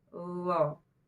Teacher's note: Zal, lo itu sama. Cuman bedanya lo dibaca tebal. Cara melafazkan posisi lidahnya sama.